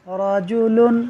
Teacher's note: را پر زبر ہے، را کو پر پڑھیں گے، رجل نہیں پڑھیں گے، را باریک ہو جاتا ہے اور را پر ہو جائے گا۔